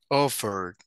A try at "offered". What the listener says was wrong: Very good. So letter D, offered, offered. Very good.